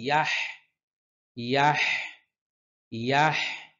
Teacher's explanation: এখানে হা কণ্ঠনালীর মধ্যখান থেকে